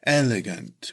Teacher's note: It's pronounced elegant with emphasis on the first syllable